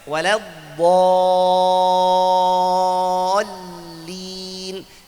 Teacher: Jangan baca waladhdallin. Hati-hati karena huruf dad tebal, madnya juga ikut tebal.